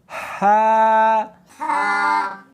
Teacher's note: ہا نہیں پڑھنی بلکہ اس کو حلق میں سے نکالنا ہے، سینے میں سے نہیں نکالنا